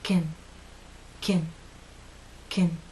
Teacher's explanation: your lips are completely relaxed and your tongue is no longer flat and pushed forward. The middle part is actually pushed up a bit.